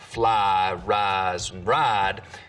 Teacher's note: some southerners smooth the diphthong in words like fly rise and ride but use diphthong in rice and right